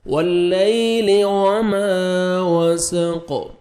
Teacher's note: الف مد ہے، میم کو 1 سیکنڈ کھینچنا ہے، وما وسق، قاف ساکن ہوئے گا تو قلقلہ آئے گا، ڈبل ساؤنڈ آئے گا ، حروف قلقلہ میں سے ہے قاف، واللیل وما وسق، واو